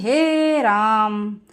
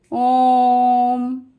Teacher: प्लुत स्वर में उच्चारण की 1 मात्रा का 3 गुना समय लगता है।